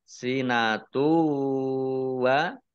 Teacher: dhammah tanwin bertemu dengan huruf wawu, bacaan idgham bi gunnah masuk dengan mendengung. Mendengung wawu, ditandai wawunya ada tasdidnya, ya, ditekan ya 2 harokat.